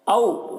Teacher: اس واو کو واو لین کہتے ہیں، اسے نرم آواز کے ساتھ جلد پڑھا جاتا ہے